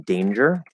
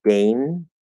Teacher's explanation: it might be written with NG, but it's not a G, it's actually a J, like in danger.